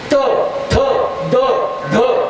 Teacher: त थ द ध हे दांतवे, जीभ येऊन दाताला लागली